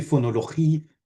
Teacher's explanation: a 4-syllable word composed of only CV syllables with stress, secondary stress on the first syllable and primary stress on the last syllable